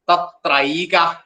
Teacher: ആ എ കൂടുമ്പോൾ ഐ ആണ് വരുക